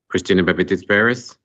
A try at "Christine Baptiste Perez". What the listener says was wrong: Point of clarification is Christine Baptiste Perez, and I'm No, you said Christina. Christine.